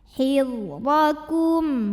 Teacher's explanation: huruf dha dibunyikan secara tafkhim karena berbaris di atas, maka dibacanya tebal.